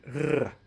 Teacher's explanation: In Dutch, this is pronounced as a rolling R